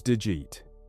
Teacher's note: The D and the Y combine to make a G sound.